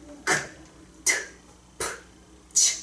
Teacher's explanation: 숨을 거세게 내뱉으면서 나는 소리라 거센 소리거든?